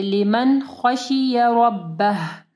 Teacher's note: नून साकिन के बाद खा है ना, तो यहाँ पे इजहार होगा, यानी हम लोग गुन्ना नहीं करेंगे। लिमन खशिय रब्बह, रॉ को हैवी पढ़ना है और आखिर में ये हा पढ़ना है, ठीक है।